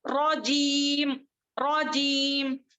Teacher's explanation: अब यहाँ पे क्या हो रहा है, मद्दे आरिदली सुकून है, वक्त की हालत में हम खींचेंगे 2 से 6 हरकत तक खींच कर लंबा कर उसको वक्त करेंगे